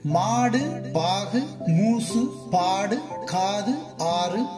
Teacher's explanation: அதாவது தனி நெடிலுடனோ பல எழுத்துக்களை தொடர்ந்தோ சொல்லுக்கு இறுதியில் வல்லின மெய்யோடு சேர்ந்து வரும் உகரம் தனக்குரிய மாத்திரையிலிருந்து குறைந்து அரை மாத்திரை அளவே ஒலிக்கும். அது குற்றியல் உகரம் எனப்படும்.